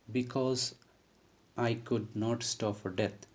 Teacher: stressed here you see b is unstressed and cause is stressed i is unstressed and could is stressed not is unstressed and stop is stressed · First syllable in each foot is unstressed and second syllable is stressed. Here you see B is unstressed and cause is stressed. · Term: iambic tetrameter